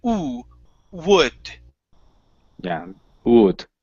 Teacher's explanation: think of that W as an oo sound.